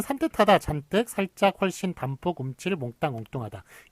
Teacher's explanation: 유성음 뒤에서 다 된소리가 소리가 나고 저 된소리가 소리가 나고 있고 그거를 다 표기에 반영을 하고 있군요. · 니은, 리을, 미음, 이응 받침 뒤에서 나는 된소리. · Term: 원래 된소리